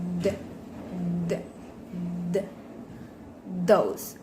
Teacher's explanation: With manner of articulation, fricative, and place of articulation, interdental.